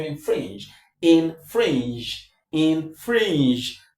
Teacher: the stress is on fringe. So this is less stress. The voice goes down and goes higher as we come to fringe.